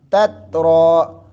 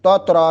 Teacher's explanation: تا کو باریک رکھنا ہے، دونوں تا باریک ہیں، توترا نہ ہو جائے، اگر توترا پڑھیں گے تو تو کی ادائیگی آئے گی تو پھر اس کا معنی بھی چینج ہو جائے گا اور لفظ بھی جو ہے نا وہ حرف بھی غلط ہو جائے گا، تو اس سے بچنا ہے ہم نے۔